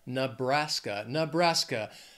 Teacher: three syllables stress is also on that second syllable